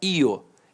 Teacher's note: Então o I semivogal e o O vogal.